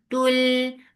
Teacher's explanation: This is idgham without gunna. So you are not keeping the sound in your nose at all.